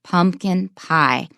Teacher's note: it's the main ingredient so we stress both